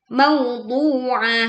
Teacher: Bukan du tapi du. Wau sukun ini kemudian dibacakan dua harakat panjang. Ah, mauduah.